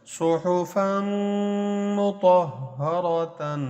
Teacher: صحفا فا کی دو زبر کو جب میم سے ملائیں گے تو فم بنے گا